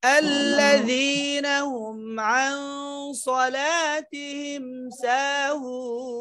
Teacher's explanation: ইখফা গুন্না কিন্তু পরে যেহেতু সদ মোটা হরফ এসেছে মোটা করতে হবে গুন্নাটাই মোটা হবে